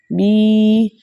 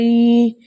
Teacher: बगैर खींचे, बगैर झटका दिए, डेढ़ हरकत की देर लगाकर नरमी और सहूलत से पढ़ा, क्योंकि ये हुर्फ़े लीन है।